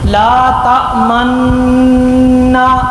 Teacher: دونوں نون کے اندر غنہ کیا جائے گا اور پھر کسی چیز کی طرف اشارہ نہیں کیا جائے گا۔ جیسے لا تأمنا، آپ نے میرے ہونٹ دیکھے، آپ بھی اسی طرح پڑھتے ہوں گے، ہونٹوں سے اشارہ کیے بغیر ہونٹ سیدھے اور پڑھتے ہیں لا تأمنا۔ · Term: خالص اشمام